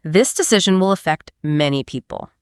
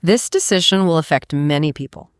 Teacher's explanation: it's a statement of fact, so speak it with a downward confident intonation at the end. Don't end it like a question.